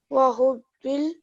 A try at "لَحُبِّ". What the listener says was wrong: لحب. Okay, this here is a li, okay? So don't say محب, say لحب. You have a shadda here, so we have a ba mushaddad, and we have a lam.